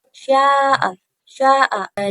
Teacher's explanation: mat wajib mutasil, yaitu bila mat tabi'i bertemu dengan hamzah dalam satu kalimat. Cara membacanya 4 sampai 5 harokat.